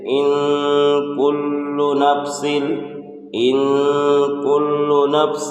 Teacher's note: نون ساکن کی آواز کو ناک میں چھپا کر پڑھیں گے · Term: اخفا